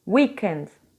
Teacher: A stressed syllable, ou seja, a sílaba tônica aí é a primeira.